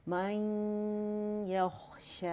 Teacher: اور غنے کی آواز آپ کو فیل ہونی چاہیے, تھوڑی منہ سے آئے گی, زیادہ ناک سے آئے گی.